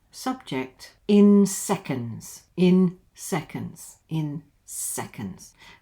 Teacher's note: And of course, in seconds comes down at the end. Seconds, don't forget the schwa here, the seconds.